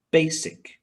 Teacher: so it can be for long words like diplomatic or short words basic the stress is on the syllable before last